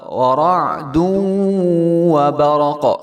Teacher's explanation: برق قاف کے اوپر جو ہے وہ کلکلا ہوگا